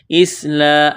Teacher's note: را کو لام کے ساتھ ملانا ہے، را کے اوپر زبر ہے، موٹا کرنا ہے